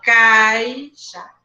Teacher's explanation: Agora, se eu tenho um ditongo onde eu tenho primeiro a vogal, que é forte, e depois a semivogal, que é fraquinha, quer dizer que o som vai diminuir. Ele vai começar alto, cai, ó. Primeiro a vogal e depois a semivogal. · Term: ditongo decrescente